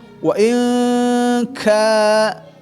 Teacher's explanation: Fathah depannya ada alif panjang, ya. Panjang. Dua ketukan ka, ya, dengan hamas. · Secara mahroj kan huruf ka, ya, adalah pangkal lidah, ya, naik ke atas turun